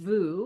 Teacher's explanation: So, the vv, if you make that noise, you can feel the vibration start because it starts on your uh lip as you make that sound. The oo you're gonna say as an extended vowel on the lowest sound you can make